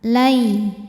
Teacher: Di sini ada hukum tajwid namanya harfulin atau huruf lin. Sebab ada ya sukun yang didahului harokat fathah, maka dibacanya cukup kita lembutkan atau kita lunakan.